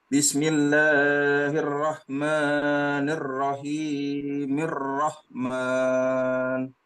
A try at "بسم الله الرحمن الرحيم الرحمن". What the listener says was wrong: Ya, 2 harokat saja. Bismillahirrahmanirrahim. Rahman.